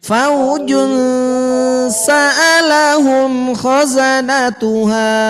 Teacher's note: harus ditahan, didengungkan dan disamarkan karena dia itu adalah memiliki hukum bacaan ikhfa